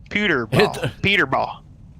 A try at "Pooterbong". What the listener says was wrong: it's not Peter. It's Pooter.